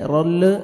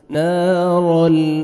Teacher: second آپ نے نون کو کھینچنا بھی ہے را کو فتحہ را کو موٹا کر کے لام کے ساتھ ملائیں گے اور لام کو آپ نے ہلانا نہیں ہے